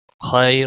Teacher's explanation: بیدہ الخیر خیر خا کا موٹا پڑھیں گے. یا لین ہے اے تھوڑا کھینچ کر نرمی کے ساتھ ادا کریں گے. را رکنے کی صورت میں ساکن ہوگا تو اور باریک بھی پڑھا جائے گا.